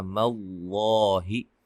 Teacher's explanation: لفظ اللہ کے لام کو موٹا ادا کریں گے